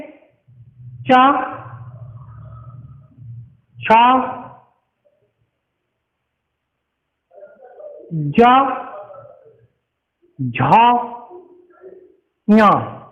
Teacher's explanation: चा वर्ग वाले बोले जाते हैं तालु से